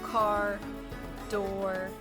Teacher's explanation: the r is not trilled in english